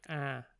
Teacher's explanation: that vowel is not quite accurate it's it's lower it's like ah and it's nasalized